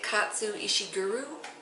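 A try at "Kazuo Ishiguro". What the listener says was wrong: It's the first name you don't say right. Katsuo.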